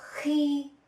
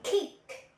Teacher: H, as in khi, when. You should note that it is a fricative sound, not an explosive plus aspiration as in English, k.